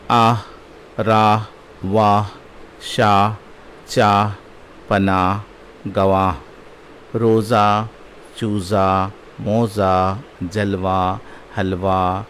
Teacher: لفظ کے آخر میں آنے والی ہے جو صرف مفتوح مختصر مصوتی کی طرح ادا کی جاتی ہیں، ہائے مختفی کہلاتی ہیں۔